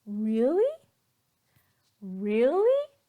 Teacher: You're in disbelief, you're shocked. So our pitch will go up.